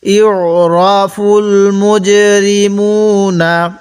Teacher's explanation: জিমের মধ্যে একটু ধাক্কা দিয়ে পড়ব, কারণ জিমটা হলো কলকলা হরফ